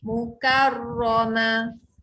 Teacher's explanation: Jangan baca mukar. Sebab kaf tu nipis. Kalau kita baca mukor, dia jadi huruf qaf.